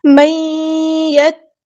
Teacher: تا پہ تشدید یعنی شدہ والا حرف ہے، تو اس کو ایک بار ساکن کر کے ایک بار اس کی حرکت کے مطابق پڑھنا ہے۔ من یت، یہ ساکن کر دیا، پھر تا، یہ حرکت یعنی زبر یعنی فتح پڑھی ہے، تو اس کو یہ تاخیر نہیں کرنا، ٹھیک ہے، زبر سے یہ پیش یعنی حرکات کو ہم لمبا نہیں کرتے۔